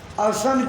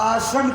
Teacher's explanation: जैसे असन शब्द आया हुआ है, असन माने भोजन होता है, लेकिन अगर आपकी जीभ में जरा सा लोचपन आया, असन की जगह आसन कर दिया तो आसन माने बैठने का अड्डा, अर्थ का अनर्थ हो जाएगा। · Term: मात्रा के हेर फेर